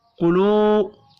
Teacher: واو مدہ ہے, ایک الف کے برابر کھینچ کر پڑھیں گے